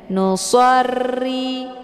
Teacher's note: getaran itu tidak boleh lebih daripada dua kali Ri ya nusri karena ini ada huruf yang bertasdid maka getarannya itu nampak keluar dari bunyi bacaan ro dan ro ini berharakah kisra lah jadi hukum bacaannya adalah tarqi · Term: takrir